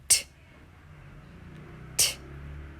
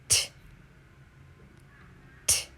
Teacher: Place the tongue tip up, behind top teeth. Let tongue down with a puff of air, but no voice out from throat. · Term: T sound